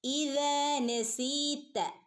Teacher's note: ഇദാ രണ്ടനക്കം നീട്ടിക്കൊടുക്കുക. നസീത ഇവിടെയും രണ്ടനക്കം സാധാരണ മദ് നീട്ടി ഓതി കൊടുക്കുക കേട്ടോ.